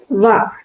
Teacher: పై పళ్ళు కింద పెదవిని తాకుతూ పలుకుతాం కాబట్టి దంతోష్టం వ పై పళ్ళు కింద పెదని తాగుతుంది కదా సో అందుకనే దీన్ని దంత్యోష్టం అంటారు.